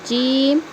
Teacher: زبان کا بیچ والا حصہ جب اوپر کے تالو میں لگے گا تو نکلے گا جیم